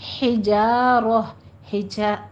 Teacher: ہا وسط حلق سے کسرہ کی باریک آواز کے ساتھ آئے گا